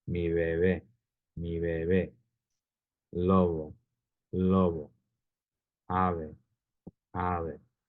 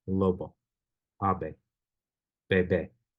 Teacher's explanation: So the examples of the soft B where the lips don't fully close